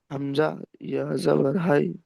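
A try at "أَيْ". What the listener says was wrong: হাই নই, হামজা ইয়া জাবার আই,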